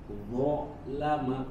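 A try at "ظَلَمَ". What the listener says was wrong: Nah, jangan ada jeda, jangan lama. Betul pendek semuanya, tapi jangan ada jeda. Dhalama.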